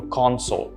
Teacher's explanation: notice the stress on con